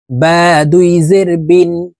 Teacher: দুই জেরের উচ্চারণ নিচের দিকে ধাবিত করে দ্রুতভাবে নুনযুক্তভাবে পড়তে হবে।